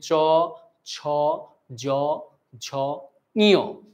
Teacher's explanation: তালু, অগ্রতালু থেকে উৎপন্ন যে বর্ণগুলো রয়েছে সেগুলো হচ্ছে তালব্য বর্ণ।